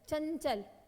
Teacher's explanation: चंचल तो देखो नाक से आवाज आ रही है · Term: अनुस्वार